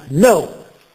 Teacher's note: Voi sapete che il verbo to know è scritto know, know con un doppio, ma non si dice know, ma no. La K seguita dalla N è muta.